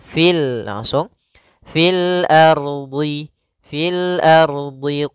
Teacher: r-nya di sini ardhinya r-nya tebal ro tebal fil ardhi fil ardhi kemudian DH Huruf dhadnya tebal ya Salah